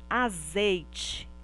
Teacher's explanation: o i está formando uma sílaba com uma outra vogal a vogal e portanto neste caso ele é uma semivogal